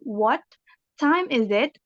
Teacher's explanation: the T in what is dropped and the vowel sound before it is closed at the glottis